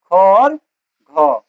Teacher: जिसमें हकार की ध्वनि उत्पन्न होती है उसे क्या बोलते हैं, महाप्राण